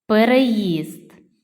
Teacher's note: 3 склади наголос падає на третій склад